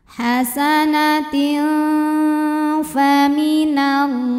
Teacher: tanwinnya dibaca samar-samar, siap-siap menuju makhraj huruf fa disertai bunyi dengung dengan dengung dan samaran yang seimbang karena huruf fa makhrajnya tidak terlalu dekat, tidak terlalu jauh dari nun. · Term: ikhfa